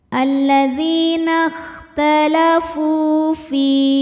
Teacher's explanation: karena ada Ya Sukun didahului baris kasrah maka huruf Fa Ini panjang dua harakat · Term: Mad Thobi'i